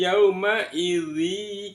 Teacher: zal berharokat kasrotain bertemu dengan ya, maka wajib dimasukkan, namanya idgham bigunnah, dimasukkan dengan mendengung. Makanya di dalam ayat ini di atas ya ditandai dengan tasydid.